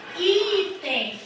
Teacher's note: o i é mais forte é uma paroxítona que terminou em em portanto eu não acentuo então o que eu acentuo lá o